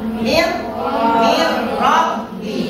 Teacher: Kalau idgham bila guna adalah tidak dibaca guna, tapi seakan-akan huruf yang kedua ini ada tasdid, ada syiddahnya bersatu